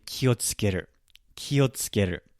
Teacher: I said ki sounded higher in pitch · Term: pitch accent